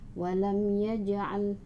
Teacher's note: Mengapa mim sukun diikuti oleh ya? Jadi pengucapannya harus jelas di bibir, atau izhar syafawi.